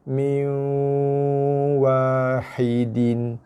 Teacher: mi abaikan nun, terus masuk ke dalam waw berserta dengung